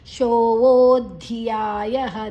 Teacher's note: ಯ ಆದ ನಂತರ ವಿಸರ್ಗದ ಉಚ್ಚಾರಣೆ ಹ